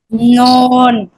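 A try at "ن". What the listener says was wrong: না না, আপনি এত আপনি কঠিন করতেছেন কেন? কঠিন না তো, খুবই সহজ। আপনার জিহ্বা জিহ্বা পেঁচানো লাগবে না, শুধু জিহ্বাটা হালকা উপরে উঠাবেন, আমার দিকে তাকান। নুন।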